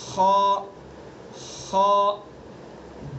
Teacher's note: خ ادنائے حلق یعنی حلق کا منہ کی طرف والا حصہ